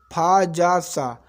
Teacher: संघर्षी व्यंजन, वह व्यंजन जिसका उच्चारण में वायु मार्ग संकुचित हो जाता है और वायु घर्षण करके निकलता है, जैसे फा, जा, सा, ये संघर्षी व्यंजन कहलाते हैं।